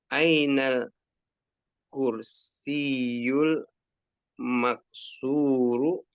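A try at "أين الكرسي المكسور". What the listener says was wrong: Masya Allah, mumtaz. Barakallah fiik.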